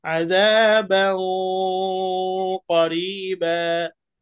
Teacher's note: যখনই ইখফা হবে আওয়াজ নাকের ভেতরে চলে যাবে